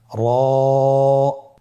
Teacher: র হরফটি এখানে আমরা পড় করে উচ্চারণ করব। মোটা করে উচ্চারণ করব। এবং র হরফটি এক আলিফ টেনে পড়ব। · র আবার বলুন র এর মাখরাজ কোন জায়গা থেকে স্ক্রিনে দেখুন জিহ্বার আগার উল্টা পিঠ তার বরাবর উপরে তালের সঙ্গে লাগিয়ে উচ্চারিত হয়